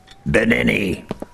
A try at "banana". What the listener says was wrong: Those vowels shouldn't be I's. They should be A's. Banana, not Binini.